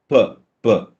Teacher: Here there's a complete blockage using both the lips, so we say this is a bilabial sound. P, p. Total closure, sudden release.